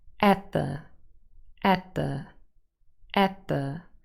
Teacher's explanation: we have a the, a voiced th sound in the article the, and the t is really lost. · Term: Elision